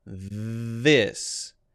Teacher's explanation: We voice the TH, we voice the I, and we do not voice the S. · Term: voiced